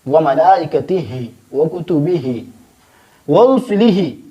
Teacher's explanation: وملائکتہ وکتبہ، یہ جو آخر میں ہا ہے، اس ہا کو ہم حلق کے پہلا حصہ سے ادا کریں گے۔